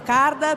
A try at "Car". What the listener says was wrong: Car, no card. Car. Hai detto card.